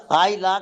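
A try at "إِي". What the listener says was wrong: আই লাইক, ঠিক বলছেন, কিন্তু ওটা আই না, ওটা দেখেন হামজাজের ই, হামজা জবর আ হতো।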